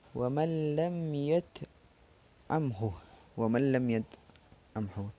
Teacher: Wa man lam, jadi dibaca idgham tanpa dengung. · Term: idgham bila gunnah